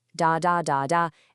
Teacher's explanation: Every single syllable gets about the same amount of time. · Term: syllable timed